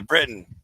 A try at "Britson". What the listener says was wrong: Britson. No, there's an S, not Britain. Brittsam. Britson.